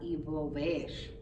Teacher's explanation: And V is another one that comes across, it doesn't match its look. You would think a verb such as envolver would have a more pronounced V sound, but it doesn't. It comes out envolver.